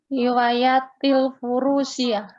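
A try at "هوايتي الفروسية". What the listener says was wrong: Hiwayati, wa-nya dipanjangkan Bu, ya-nya pendek.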